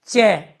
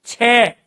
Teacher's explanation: च वायु कम आ रही है। छ वायु ज्यादा आ रही है।